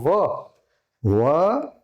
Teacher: વ દંતોષ્ઠ બંનેનો અસર થાય છે એને. એટલે અહીંયા જે વ છે ને એ દંત્યમાં પણ છે, અને આ વ તે દંતોષ્ઠ એટલે આ ઓષ્ઠમાં પણ એ વ આવશે.